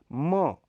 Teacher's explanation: इसका उच्चारण द्वयोष्ठ्य नासिक्य है।